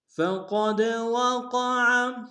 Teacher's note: ثم یدرکہ الموت فقد وقع، فقد میں قاف کو موٹا ادا کریں گے، دال کے سامنے آئیں گے، دال حروف قلقلہ سے قلقلہ کریں گے، وقع میں قاف کو موٹا ادا کریں گے، عین کو گہرے سے ادا کریں گے